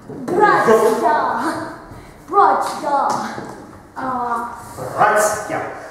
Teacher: У нас, во-первых, «т» стало мягким. Почему? Из-за мягкого знака.